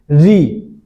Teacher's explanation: री जब उच्चारण करेंगे तो हमारी जिह्वा जो है मूर्धा को स्पर्श करेगी